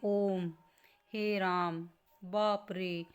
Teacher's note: ऐसे जिसमें साउंड थोड़ी सी लंबी चलती है, वो त्रिमात्रिक है। मतलब हरीशव से जिसमें 3 गुना समय लगता है बोलने में। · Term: प्लुत स्वर